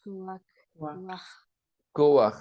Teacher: un chet. Le chet se prononce de la gorge.